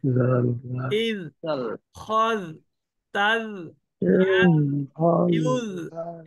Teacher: জালটা কিন্তু জিহ্বার আগা উপরে দাঁতের আগা পাতলা উচ্চারণ হবে